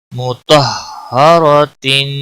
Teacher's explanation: طا بھی موٹا پڑا جائے گا، را بھی موٹا پڑا جائے گا